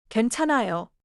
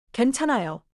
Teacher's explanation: Raise your voice a little at the end